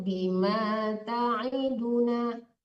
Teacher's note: Ta'idu tidak ada yang panjang di situ.